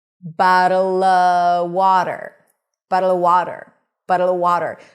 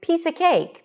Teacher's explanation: if the next word is a word that starts with a consonant, you can also drop the V